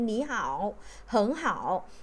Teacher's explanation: hai thanh ba đi cùng với nhau thì chúng ta sẽ phải biến âm cái thanh đầu tiên, nếu như mà từ hai âm tiết thì cái thanh đầu tiên chúng ta sẽ biến thành thanh hai